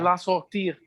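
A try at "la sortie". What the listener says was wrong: Sortie, no lleva R. No lleva R.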